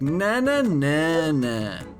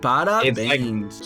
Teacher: in Brazilian Portuguese, the general tone, like the general note, trends like downward. It's like a descending melody